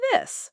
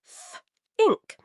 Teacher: For both, the tip of your tongue goes gently between your teeth and you blow air. For this, add voice. Th plus vowel, this. For think, it's just air. Th ink. Practice with think, this, think, that, thought, though.